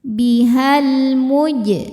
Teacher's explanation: alif lam menghadapi huruf qamariyah yaitu mim, maka lam sukun dibaca dengan jelas. Bihal muj. Jim sukun hukumnya qalqalah sughra karena ada jim yang sukunnya sukun asli dan ada di tengah bacaan. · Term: alif lam qamariyah